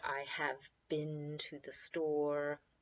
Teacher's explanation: the EE is basically it's like a short I